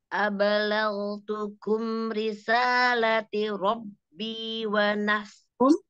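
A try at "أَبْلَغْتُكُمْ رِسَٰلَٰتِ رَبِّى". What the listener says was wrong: Risalahnya juga dua harokat. Wa nasahtu lakum.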